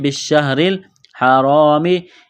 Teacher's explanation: را کے نیچے زیر ہے، را کو باریک کرنا ہے